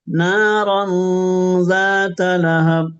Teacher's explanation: এখানে এই তানবিন ইখফা হচ্ছে, স্পষ্ট হচ্ছে না, অস্পষ্ট হচ্ছে।